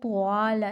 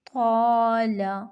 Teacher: طا موٹا حرف ہے تو الف کو ہم موٹا پڑھیں گے، طال۔ اب اس کو طوال نہیں، واو کی ساؤنڈ پیدا نہیں کرنی، طال۔